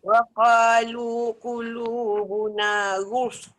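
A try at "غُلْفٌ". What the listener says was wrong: tak senyum. Dia kena macam ni. Jangan sebut fa dulu boleh. Tengok macam ni Ghul. Ghul. Tapi dia kurang sempurna lam tu. Sikit sangat lam dia tu. Ghulf. Dia bergulung dengan fa tau. Dia macam cepat sangat pergi dekat fa.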